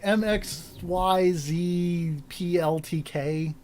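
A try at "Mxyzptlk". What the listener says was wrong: you swapped the T in the L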